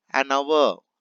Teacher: Hour H is silent. So we have to say an hour.